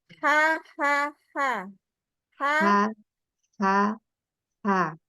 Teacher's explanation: H dari dia kan dari tengah tenggorokan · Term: H tipis